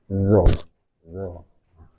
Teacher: Kalau zo itu sifatnya adalah isti'la dan itbaq. Jadi lidahnya naik ke langit atas.